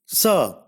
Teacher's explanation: Sa is a voiceless alveolar fricative.